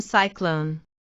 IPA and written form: ˋsaɪklon (cyclone)